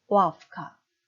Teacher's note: 역행동화 무성음화 현상에 뒤에 크 때문에 유성음 무가 무성음 F 발음 납니다